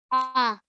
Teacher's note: The middle of your throat gets constricted a bit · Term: ayn